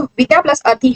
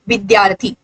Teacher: जब ये आ और अ दोनों आपस में मिले तो इन दोनों ने मिलकर क्या बनाया? आ। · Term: संधि